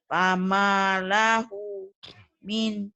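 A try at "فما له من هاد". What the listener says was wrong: Pendek ujungnya. Pamanya panjang. Fama lahu min hadin.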